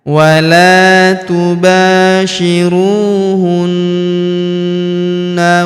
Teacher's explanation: Huruf na kita tahan dan kita tekan serta kita dengungkan dua sampai harakat karena terdapat tanda tasdid di atasnya.